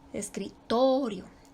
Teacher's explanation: por ejemplo tenemos la palabra escritorio no se le pone tilde no se le pone acento pero ahí recae la sílaba tónica en la sílaba to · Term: acento prosódico